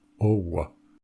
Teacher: entre o et a, on a à la base oa, et donc le we vient naturellement, owa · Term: consonne prothétique